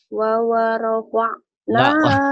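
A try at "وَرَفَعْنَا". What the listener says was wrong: Wawanya cuma. Bukan wawarofa'na. Wawanya cuma saat. Warofa'na. Warofa'na.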